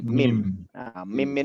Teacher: tempat keluarnya suara mim ini tidak ada lagi ya kecuali dari hidung